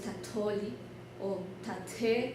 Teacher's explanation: La aspirada se junta con la última consonante, con la consonante del final del prefijo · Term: la T se aspira